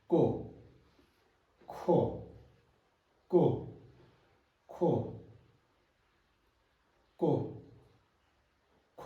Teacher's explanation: The difference is ko, no aspiration.